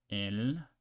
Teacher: English L but with the tip of the tongue touching the roof of the mouth so the L in English is more like L without touching